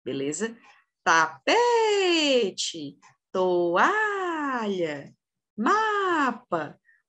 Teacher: Qual que é a posição da sílaba tônica a penúltima da palavra então ela vai ser paroxítona